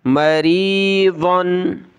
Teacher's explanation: ضاد دو زبر ظن موٹا کریں گے